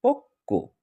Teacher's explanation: আ আ এখানে শব্দের শেষের বর্ণের সঙ্গে থাকায় বফলা উচ্চারণ তো হবেই না। আ বরং ব যে বর্ণের সঙ্গে সংযুক্ত অবস্থায় ছিল, এখানে আমরা দেখতে পাচ্ছি ক বর্ণ, সেই বর্ণের দ্বিত্ব হবে বা ডাবল হবে। তো হয়ে গেল ডাবল ক-এর পক্ক। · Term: ধ্বনির দ্বিত্ব